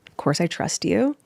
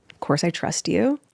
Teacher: It sounds like she's asking a question. She's got that uptalk going on.